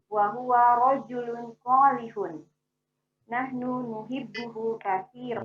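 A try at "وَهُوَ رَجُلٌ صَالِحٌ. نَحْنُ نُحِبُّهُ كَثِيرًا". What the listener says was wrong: Masya Allah. Cukup Bu Vivi. Barakallahu fiik. Ahsanti. Mumtaz. Ahsan. Bagus sekali.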